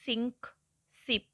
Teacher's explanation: The voiceless alveolar fricative S has a strong hissing sound as the S in English sink, sip. ਸੋ ਐਸ sound ਜਿਹੜੀ ਉਹ ਵੋਇਸਲੈਸ ਹੈ, means ਇਹਦੇ ਵਿੱਚ vibration ਨਹੀਂ ਹੁੰਦੀ, ਇੱਕ ਹਿਸਿੰਗ ਸਾਊਂਡ ਆਉਂਦੀ ਹੈ। ਔਰ ਐਲਵੀਓਲਰ ਹੈ, ਮੀਨਸ ਇਹ ਜਿਹੜੀ ਟੰਗ ਹੈ ਉਹ ਟੱਚ ਕਰਦੀ ਹੈ ਰਿਜ ਬਿਹਾਈਂਡ ਦਾ ਟੀਥ, ਮੀਨਸ ਟੀਥ ਰਿਜ ਨੂੰ ਟੱਚ ਕਰਦੀ ਹੈ।